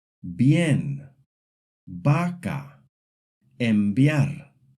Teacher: At the beginning of a word or after the letters M or N, it's a strong, hard B sound, just like in English.